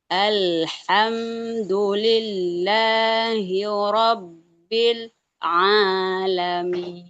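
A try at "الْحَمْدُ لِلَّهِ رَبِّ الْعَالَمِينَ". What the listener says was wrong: Jadi malah sakta. Robbil alamin. Tetap dialirkan lamnya. Alham. Jangan hilang tawasudnya. Al. Nah, itu dilatih terus biar tidak loncat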